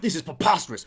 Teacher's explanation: that second syllable is puh, and he hits it with a super hard plosive